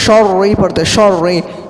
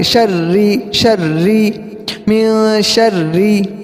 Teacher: رو کو بالکل باریک کریں گے